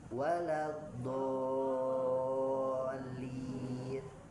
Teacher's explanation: Kalau do kan pinggir ya, di pinggir lidah tuh do. Nah geser, pinggir lidahnya tidak nempel, jadinya do.